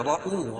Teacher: را کو پر پڑھیں گے کیوں را کے اوپر زبر یا پیش ہو تو را پر پڑھے گا